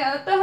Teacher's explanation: जब हम विसर्ग वाले जो शब्द बोलते हैं, जैसे यहाँ पे अतः लिखा हुआ है तब ह का साउंड आता है